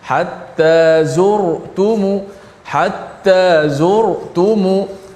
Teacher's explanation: Ra mati sebelum dia berbaris di hadapan sentiasa tebal sokmo. Hatta zurtumu, hatta zurtumu dibaca tebal.